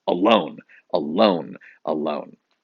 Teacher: the word alone has two syllables and you say the second one a little harder so you barely say the first one that's unstressed